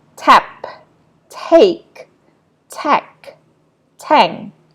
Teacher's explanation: when it is at the beginning of the word, yeah, usually it is pronounced as aspirated t